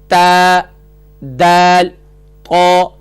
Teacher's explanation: اس کا مخرج ہوا زبان کی نوک اور ثنایا علیہ کی جڑ سے ادا ہوتے ہیں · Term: حروف نطعیہ